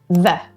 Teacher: Your top teeth rest gently on your bottom lip. Air flows, vocal cords vibrate. Bite your V's.